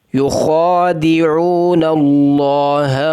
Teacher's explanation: یا کے اوپر ہونٹوں کو گول کرنا ہے، خا کو موٹا کرنا ہے، ایک الف کے برابر کھینچنا ہے.